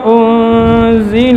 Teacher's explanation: زا کے اندر صفت جہر ہے اور رخوت ہے